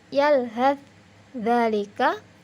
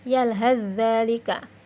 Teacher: Contoh-contohnya, yalhadz dzalika, maka langsung taknya tidak dibunyikan, langsung membunyikan huruf dzal yang menjadi ditasydid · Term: idgham mutaqaribain